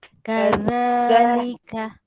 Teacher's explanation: dia macam kaza, lidah tu keluar sikit